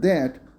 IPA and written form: ðæt (that)